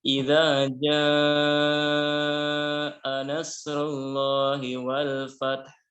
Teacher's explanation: jadi kata jaa yang artinya datang atau tiba wajib dibaca panjang 4 harokat atau 5 harokat. Tidak boleh kurang, ya. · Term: mad wajib muttasil